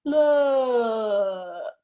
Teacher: your muscle tension is low but we can still make it long